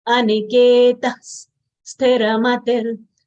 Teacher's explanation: Full letter, ni short sound, k long sound, ta full letter followed by visarga. Visarga sound comes out as half sa as we exhale forcefully to pronounce visarga and prepare our mouth to say sa of sthiramatir. Sthira, stha is a conjunct letter, half sa, full tha having short e sound followed by ra full letter.